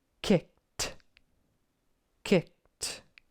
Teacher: remember the Ed is not ID but t t